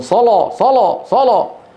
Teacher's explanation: يقولونها باللام المفخمه ليس عن عمد طبيعته لهجتهم هكذا